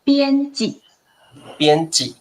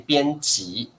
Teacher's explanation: 台湾比较不会把第二个字轻声化